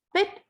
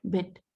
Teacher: pit is voiceless, bit is voiced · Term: fortis